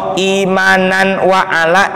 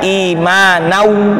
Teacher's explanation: bunyi n pada nun sukun atau tanwin tersebut dilebur, dimasukkan ke dalam huruf di depannya